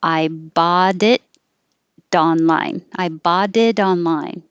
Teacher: if you say I bought it online, those T's change to D's because they're between vowels